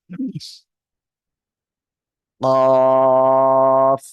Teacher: জিব্বার গোড়া তার বরাবর উপরে তালুর সঙ্গে লাগিয়ে, দুই নোক্তাওয়ালা কফ। আর এই কফ অক্ষরটা কিন্তু মোটা আওয়াজে উচ্চারণ হবে, কি বললাম? মোটা আওয়াজে উচ্চারণ করতে হবে, মনে থাকবে আপনাদের?